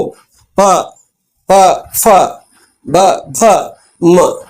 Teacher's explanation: ಈ ತುಟಿಗೆ ಪಡೆದೆ ಕೆಳಗಿನ ತುಟಿ ಮೇಲ್ ತುಟಿಗೆ ಪಡೆದೆ ಪ ಭ ಓಕೆ ದೊಡ್ಡ ಫಗೆ ದೊಡ್ಡ ಭ ಗೆ ಮತ್ತೆ ಗಾಳಿಯ ಒತ್ತಡ ಬೇಕೇಬೇಕು ಪ ಫ ಬ ಭ ಮ ಮ ಗೆ ಮತ್ತೆ ಇಲ್ಲಿ ಮೂಗಿನ ಸಹಾಯ